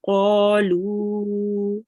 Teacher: Make sure to make the lu longer than the qa. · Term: medium long stretch